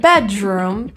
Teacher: you might hear a little bit of a j sound when there's no J in that word